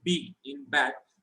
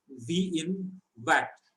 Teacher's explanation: when we put a Dagesh in Beth, this pronunciation is hardened, and that gives us the clear pronunciation B in bat